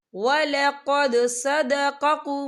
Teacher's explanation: या देखिए वलक़द, यहाँ पे दाल साकिन है, तो यहाँ पे कलकला होगा